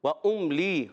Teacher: واو کی ادائیگی ہوتی ہے ہمیشہ ہونٹوں کی گولائی سے